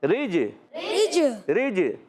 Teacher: جیم حرف قلقلہ میں سے ہے، جب وقف کریں گے تو جیم پر قلقلہ ہوگا، آواز آئے گی رج رج رج۔